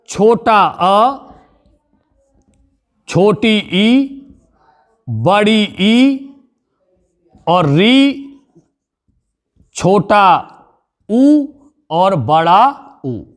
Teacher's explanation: साथियों, ये हमारे जो 6 हैं ये कहलाते हैं हमारे संवृत स्वर, क्योंकि इनके उच्चारण में हमारा मुख द्वार लगभग बंद रहता है